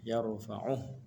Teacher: Waqaf berhenti pada ha matikan dia yarfauh tak boleh baca panjang